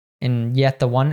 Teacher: we'll just drop the T and just keep the TH. So it'll be like yetta, and yet the one.